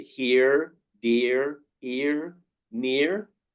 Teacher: Americans would say here, dear, ear, near. If there is an R, they stress the R. But for British pronunciation, they would make it long and it becomes ear.